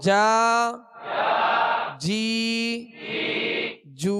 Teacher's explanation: یہ جیم شین یا یہ تین حروف ایک ہی جگہ سے ادا ہوتے ہیں، یعنی بیچ زبان اور بیچ تالو ، زبان کا بیچ اور تالو کا بیچ، اوپر والے تالو